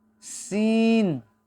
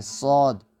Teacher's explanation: صاد جب آپ ادا کرتے ہیں تو ایک تو آواز میں تھوڑی سی دباؤ ہوتی ہے، اور دوسری ہے کہ کی جو سیٹی کی آواز ہے وہ گول ہوتی ہے، صاد۔ سین میں آواز باریک ہوتی ہے، صاد میں آواز تھوڑی سی موٹی ہوتی ہے